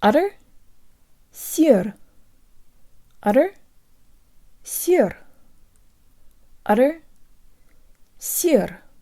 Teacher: The flipped Russian r is just like the flick of the tongue that native speakers of English in the US use with the word utter.